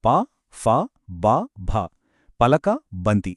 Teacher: కేవలం 2 పెదాలు కలవడం ద్వారా వచ్చేవి. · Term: ఓష్ఠ్యాలు